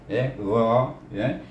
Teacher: ghain iaitu makhrajnya di hujung halkum, iaitu kalau kita perhati cakap biasa Melayu atas halkum, gha, bila di baris atas bunyinya gha, ghain.